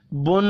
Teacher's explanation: نون مشدد پر غنہ کرنا ہے۔